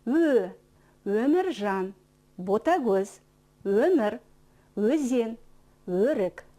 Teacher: Он произносится мягко, нежно, слегка растянуто.